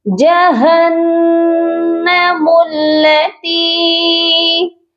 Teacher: میم کو لام مشدد کے ساتھ ملائیں گے اور تا کو یائے مدہ کے ساتھ ملا کر پڑھیں گے تو ایک الف کی مقدار لمبا کریں گے · نون مشدد پر ہمیشہ غنہ ہوتا ہے